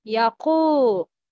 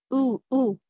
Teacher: The deepest part of the tongue is raised with rounded lips. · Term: Waw mad